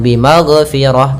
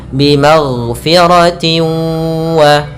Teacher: Fabashirhu bimagh, ghain jangan memantul, dia bukan huruf qalqalah